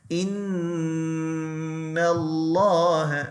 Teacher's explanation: Remember that's ghunna, so you make it long by 2 vowel counts.